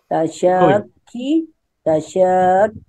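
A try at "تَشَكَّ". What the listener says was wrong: Tasyaka ibu, bukan tasyaki. Tasyaka.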